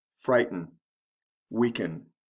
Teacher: if there are two syllables the first syllable is emphasized